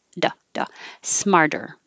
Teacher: just saying it changes to a d but the point is it doesn't have to be a perfect d like duh with holding the airflow and releasing it it can be a very quick tap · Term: flap